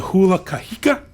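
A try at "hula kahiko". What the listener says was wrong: The emphasis is on the wrong syllable.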